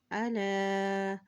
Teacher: لام کے اوپر دیکھیں کھڑی زبر ہے اس لیے اس کو ایک حرکت لمبا ادا کریں گے